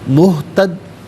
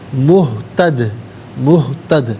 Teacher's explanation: دال ساکن تو ہے لیکن حرف قلقلہ ہے، تو جب اسے ساکن کریں گے تو آواز لوٹتی بھی محسوس ہونی چاہیے